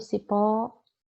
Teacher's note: Olha o cipó, pó é a sílaba tônica, é a sílaba mais forte